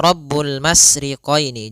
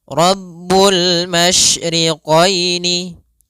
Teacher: maka kita harus membacanya dengan adanya sifat tafasyi Apa itu tafasyi tafasyi adalah salah satu sifat yang terkandung di dalam huruf syin yaitu menyebarnya suara sehingga Jangan dibaca rbul masriqini jangan dengan huruf Sin tapi dia